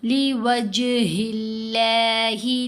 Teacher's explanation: ہا کے نیچے زیر، اس لیے لفظ اللہ کی لام کو ہم نے باریک پڑھنا ہے